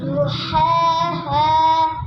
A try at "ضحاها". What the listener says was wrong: زا کا آواز نکال رہے ہیں، واد ہے ضحاها، پھر زو ضحاها، جی